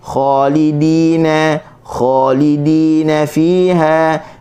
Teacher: dal hujung lidah di gusi, bagi bawah dina kita senyum